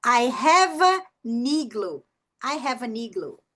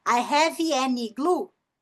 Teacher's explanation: Mas aí se eu tenho n aqui, eu vou conectar o n com a vogal da próxima palavra.